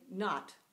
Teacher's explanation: it's an O pronounced Ah that's a short vowel